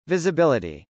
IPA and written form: vˌɪzəbˈɪlɪti (visibility)